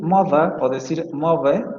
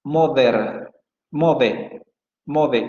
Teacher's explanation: En Liverpool se atestigua el fenómeno conocido como oclusión de fricativas, que consiste en que las interdentales se van a realizar así.